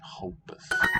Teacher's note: note how word initial R sounds in Brazilian Portuguese, like kind of like an H.